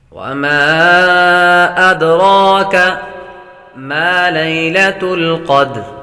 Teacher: حروف مدہ کے بعد حمزہ دوسرے کلمے آ رہا ہے تو مد منفصل ہوگی